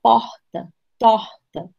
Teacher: é um R que sai aqui do fundo da garganta sem qualquer tipo de obstáculo, certo? Fonético, ele sai livremente, quase como uma vogal, ó, porta, torta, certo?